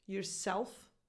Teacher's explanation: So yourself gets reduced to yourself. The stressed part is self